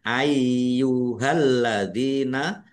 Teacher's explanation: lamnya ada tasdidnya, dibaca double, ditekan dan ditahan biar tampak double.